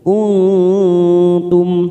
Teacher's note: kita samarkan bunyi nun sukun 3 ketuk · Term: ikfa hakiki